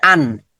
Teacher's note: নুন সাকিন পেয়েছি, তারপরে হা আছে, উইদাউট গুন্না, গুন্নাটা হবে না